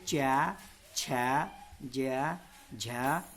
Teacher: च को बोलते समय हमारी जीभ मुंह के छत के पिछले भाग को छूती है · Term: तालव्य